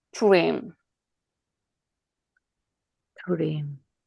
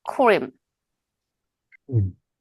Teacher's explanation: 크는 무성음이죠. 네, 그러니까 R도 영향을 받아서 무성음으로 발음된다는 거예요. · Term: 무성음화